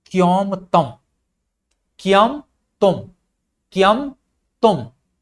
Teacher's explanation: ये क्योमतम का जो क्य है ये एक तालव्य ध्वनि है